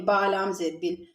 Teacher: یہاں پر الف کو ہم نہیں پڑھیں گے، با کو ہم لام کے ساتھ ملائیں گے